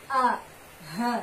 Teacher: Yang keluar dari tenggorokan bawah misalnya huruf hamzah dan ha. A, ha, itu huruf hijaiyah yang keluar dari tenggorokan bawah